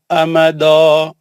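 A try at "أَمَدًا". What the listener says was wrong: नहीं, दो नहीं, फिर दाल मोटा नहीं पढ़ना, हम दो नहीं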